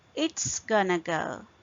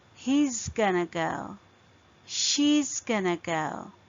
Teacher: It is going to go will be reduced to it's gonna go. The thing to remember is in the end it's s sound. It's s. With he and she it was z sound